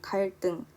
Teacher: 갈등은 여기에 리을이 있기 때문에 뒤에 있는 쌍디귿으로 발음이 나고 있습니다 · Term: 된소리